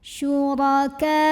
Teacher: Huruf ra dibunyikan secara tafkhim karena barisnya fathah. Maka dibacanya tebal, pangkal lidah dinaikkan.